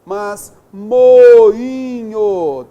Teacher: Temos vogal, só que esse I ele foi nasalizado, né, pelo NH